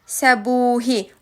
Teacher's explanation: u saiti uzun tələffüz olunur. Qalın saitdir. Dodaqlanandır və qapalıdır.